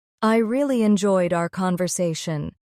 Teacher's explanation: Notice the natural stress on really and conversation. Stressing the right words helps your English sound more natural.